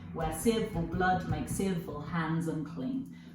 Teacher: so we have five of this rhythm unstressed stress rhythm